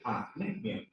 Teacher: tem a maior intensidade na penúltima sílaba.